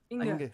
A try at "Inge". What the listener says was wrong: First of all, soft G and an E in the end, not an A. Difference. Yes, Inge.